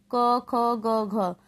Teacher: क वर्ग का उच्चारण स्थान कंठ होता है। तो घ क वर्ण में ही आएगा ना, क वर्ग में, क ख ग घ, इसलिए इसका घ का उच्चारण स्थान कंठ होगा।